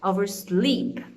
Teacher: The stress or the emphasis is going to be in the second component, which is sleep.